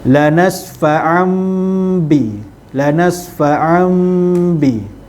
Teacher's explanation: So kat sini tanwin iklab tu, tanwin bertemu dengan huruf ba, tutup mulut, dengung 2 harakat, kemudian sebut huruf ba